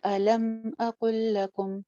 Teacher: میم ساکن آ رہی ہے, کہیں پہ بھی ہم نے اس کو غنہ کر کے نہیں پڑھنا